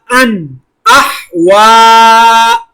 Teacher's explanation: حمزہ کے اوپر تنوین پر غنہ نہیں کیا کیونکہ آگے حروف حلقی ہے